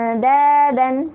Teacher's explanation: Jadi ujung lidah bertemu dengan gusi atas. Yang dal itu istifal atau tipis, sedangkan yang to itu isti'la atau tebal.